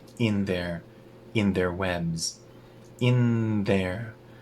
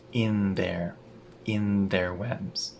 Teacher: When I say the n in, it connects to the, so my tongue stays between my teeth.